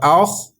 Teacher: خا حروف مستعلیہ کا لیٹر ہے، اس کو پور موٹی آواز میں پڑھیں گے